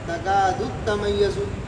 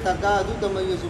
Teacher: पहले दाल को ता को मुशद्ददा करके दाल को ता के साथ मिलाया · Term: तशदीद